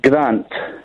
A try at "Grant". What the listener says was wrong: He's emphasising the A. You said grunt.